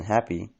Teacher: the phenomenon known as happy tensing changes the short I at the end of a word, such as in happy, into a long E